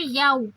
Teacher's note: یہ بل کھاتی آواز ہوتی ہے اور اس کو ہم 1.5 حرکہ لمبا کرتے ہیں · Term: مد لین